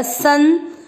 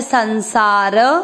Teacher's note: स के ऊपर जो बिंदी है क्योंकि शब्द में स्टार्टिंग के अक्षर पर है तो उसको पढ़ेंगे आधा न जो नाक से पढ़ा जाएगा